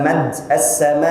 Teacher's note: Waktu kita baca misalnya mad as-sama', pas kita masuk hamzah sukun, dua pita suara itu tutup secara lengkap